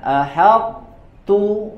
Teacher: Diidghamkan ke huruf ta, tapi sifat itbaqnya tidak diidghamkan, harus tetap disempurnakan. Ahad tebal dulu, baru kemudian tipis huruf ta-nya.